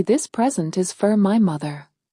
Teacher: they drop the structure words down to their weak form, replacing their clear vowels with the most common lazy sound in the English language, the schwa